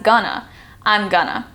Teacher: The to is typically completely dropped and an A is put on the end as gonna.